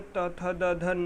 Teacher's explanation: चौथे वर्ग में त थ द ध न आता है, जिसे त वर्ग कहते हैं, यह दंत से बोला जाता है।